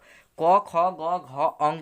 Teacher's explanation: जैसे कि क वर्ग में यानी क से लेकर ज्ञ तक ये कंठ से बोले जाते हैं। क वर्ग जो है वह क, ख, ग, घ, अंग ये सब कंठ से बोले जाते हैं